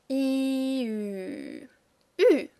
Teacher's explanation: For U, the tongue is exactly behind the teeth again, but our lips are round.